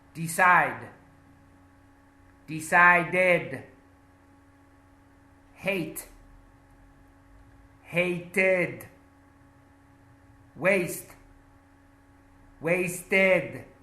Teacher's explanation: So we add the ID sound, the separate syllable sound.